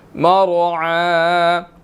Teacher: عین کے اوپر جو ہے وہ کھڑی زبر ہے، اس کو ہم نے 1 سیکنڈ کھینچ کر پڑھنا